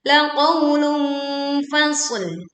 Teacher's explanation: kita meleburkan tomah tanwin ke fa. Ini termasuk bacaan sengau, jadi tidak tergesa-gesa.